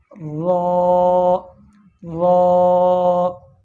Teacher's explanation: را کا مخرج ہے زبان کی نوک اور مقابل کے تالو سے، زبان کی نوک اور مقابل کے تالو سے یہ را ادا ہوتا ہے۔